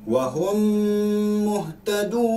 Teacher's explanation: Hukum bacaannya 2 harakat, dengung 2 harakat. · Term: idgham mithlain saghir